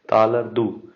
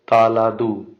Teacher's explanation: So R is a silent when the next word start with a consonant. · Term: R becomes silent